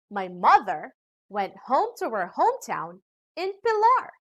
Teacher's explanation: pilar is a noun and it is the last content word in this sentence so we put the stress and emphasis to this word